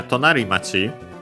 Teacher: the accent of the compound is on the ri, on the final syllable of the first word part of the compound